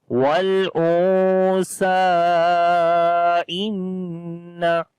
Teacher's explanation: So that's why we can say this is a madda letter, which is alif. So after the madda letter, hamza is coming in the beginning of the next word. So this mad will be madde munfasil. You have to long 3 to 4 alif.